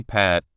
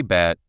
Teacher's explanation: When you say pat, your lips come together quickly and then open, and your throat does not make a buzzing sound. When you say bat, your lips also come together, but this time, your throat makes a buzzing sound. It is that small buzzing in your throat that makes the difference.